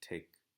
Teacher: When the T is coming at the beginning of a stressed syllable, it tends to remain strong. And what I mean by that is it makes that real t sound. For example, if I have a word like take, it stays that aspirated t sound.